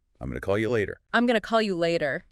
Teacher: going to for future action often becomes gonna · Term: reductions